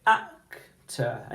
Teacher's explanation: your intonation rises on the first syllable which is AK and it goes down again for the final syllable